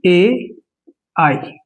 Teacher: इनका उच्चारण हो रहा है कंठ प्लस तालव्य से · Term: कंठ तालव्य